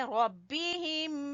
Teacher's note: را کو پر پڑیں گے، با کو چھوٹا پڑیں گے ، ربہم، یہاں پر غنہ کریں گے، یہاں پہ ادغام میں